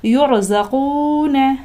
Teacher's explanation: کو پر پڑھیں گے، لہٰذا ترجعون، یرزقون، یہاں پر بھی دیکھیں را ساکن سے پہلے حرف پر پیش ہے، لہٰذا اس را کو بھی ہم پر پڑھیں گے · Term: را کو پر پڑھیں گے